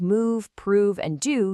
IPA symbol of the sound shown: uː